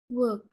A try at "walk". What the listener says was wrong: Walk. Walk. Okay, open your mouth. I want you to open your mouth. You say walk. Walk.